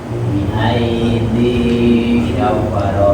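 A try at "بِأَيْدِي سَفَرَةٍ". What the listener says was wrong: Biasa sinnya safara.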